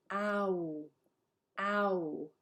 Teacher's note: we start with ah and then we're rounding your lips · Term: diphthongs